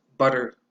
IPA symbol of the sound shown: ʌ